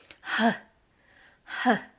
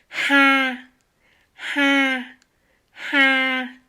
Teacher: Ici, nous avons un H vietnamien très expiré. H, h.